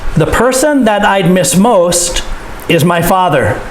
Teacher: person most father so that these are the important words of the sentence